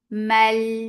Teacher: This is idgham without gunna, so you are not keeping the sound in your nose at all.